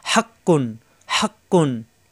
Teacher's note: জিব্বার গোড়া থেকে উচ্চারণ হবে, হা চাপ দিয়ে, হক কুন, হক কুন।